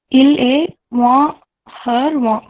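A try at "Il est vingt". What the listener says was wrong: So here what you said is correct, but here you should pronounce this T. Il est 20.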